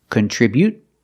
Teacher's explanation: you can use a stop T, contribute, and just stop the air without releasing the T, or you can release the T.